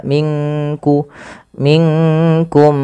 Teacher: Pelafal minkum samarkan nunnya ke kaf